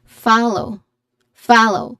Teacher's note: There's a clear diphthong here. Follow, it has a stress on the first syllable with a long A sound. followed by another diphthong O